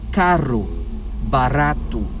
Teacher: o som do nosso R como aí carro barato envolve várias trepidações várias vibrações da língua tocando o céu da boca